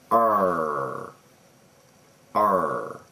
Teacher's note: the back of your tongue is up towards the top of your mouth and the front of your tongue is down lower